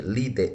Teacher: O acento está na penúltima, sendo ela então uma paroxítona.